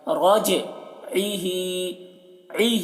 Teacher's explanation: عین کو حلق سے ادا کر رہے ہیں